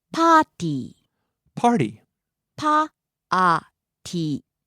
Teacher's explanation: Party starts high, drops low on the second syllable and stays low